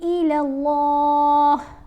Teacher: اللہ کی لام کو ہم نے تھوڑا لمبا بھی پڑھنا ہے کیونکہ کھڑا زبر ہے اور موٹا بھی پڑھنا ہے۔ اب میم کے اوپر غنہ کرنا ہے۔